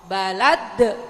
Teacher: harus kuat pantulannya karena dia qalqalah kubro